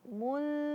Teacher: Suaranya mul karena lidah tidak dinaikkan ke atas, tapi dia hanya di tempat semula.